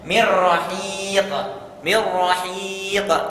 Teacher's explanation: cara bacanya adalah idgham bila gunah dimasukkan tanpa gunah